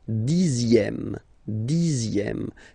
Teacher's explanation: even if you've got this X here, you pronounce it Z